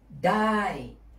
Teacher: The second way of saying can in Thai conversation is the famous dai, falling tone, dai.